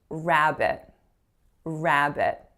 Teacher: we don't stress the second syllable in that word we stress that at the first syllable